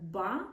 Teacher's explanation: Оскільки звук б він дзвінкий, там ще задіюються голосові зв'язки.